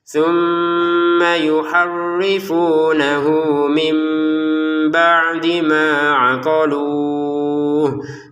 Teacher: Thumma yuharrifunahu mim ba'di ma aqaluh. Di sini nun sukun bertemu ba, maka kita bacanya tidak lagi min tapi dibaca mim ya.